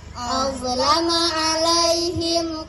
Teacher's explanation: mim sukun bertemu dengan huruf selain mim dan ba maka dibaca jelas di bibir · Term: izhar syafawi